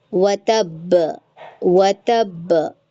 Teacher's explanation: [नाक से की जाने वाली आवाज़] अगर वो तशदीद की हालत में होंगे उस सूरत में जब हम रुकेंगे तो वहां पे कलकला थोड़ा शिद्दत के साथ देंगे। थोड़ा सख्ती आ जाएगी। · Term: कलकला अकबर